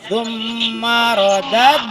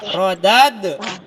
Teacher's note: dal yang disukun ini itu dibacanya mantul ya. Ada pantulan gitu ya. Seperti kalau misalnya diibaratkan bola itu kita seperti melempar bola dan kembali lagi gitu ya. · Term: qalqalah